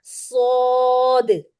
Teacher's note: इसके एंड पर दाल है और दाल को हम कलकला के साथ खत्म करेंगे · اس کے اینڈ پر دال ہے اور دال کو ہم کلکلا کے ساتھ ختم کریں گے